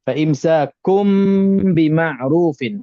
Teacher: Mim berjumpa dengan huruf ba. Jadi dibaca mim tu dibaca tertutup bibir sikit je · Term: iklab